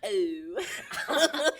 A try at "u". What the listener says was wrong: You're doing a diphthong. That's a different sound.